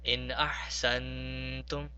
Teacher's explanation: Now notice that the first in was simply pronounced in without prolonging, and the second nun in ahsantum was prolonged. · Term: ikhfa and the izhar